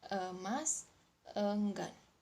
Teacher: Selanjutnya adalah vokal E, adalah vokal sedang tengah. Vokal ini dihasilkan dengan agak menaikkan bagian tengah lidah dengan bentuk bibir netral. Vokal ini hanya memiliki 1 alofon yaitu E, yang bisa terdapat pada suku kata buka atau suku kata tutup.